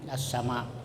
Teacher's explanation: Jadi tidak berbunyi lamnya itu kalau idgham syamsiyah, tapi langsung dimasukkan ke dalam huruf yang datang sesudah lam